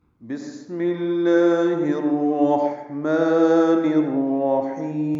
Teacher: بسم اللہ میں با کو سین سے ملانا ہے، سین ساکن ہے، اس پہ ہمس ہوگا